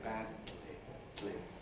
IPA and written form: ˈbædli (badly)